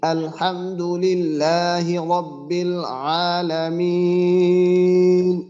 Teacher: মিন, এখানে একটু আমরা টান বেশি দেবো, এর কারণে আমরা বলছিলাম যে যদি মাদ্দের হরফের পরের হরফে ওয়াকফ হয় ওইটা আরজি, মাদ্দে আরজি, তো মাদ্দে আরজি 3 আলিফ টান দিয়ে পড়তে হয়, তো একটু টানটা বেশি দেবো।